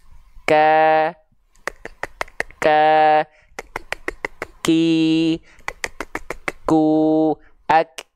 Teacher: huruf kaf dia nafasnya bukan mengalir nafas, ya, tapi hanya berupa percikan nafas